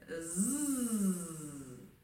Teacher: Mais si je fais zzz, les cordes commencent à vibrer. Pourtant, c'est aussi une consonne.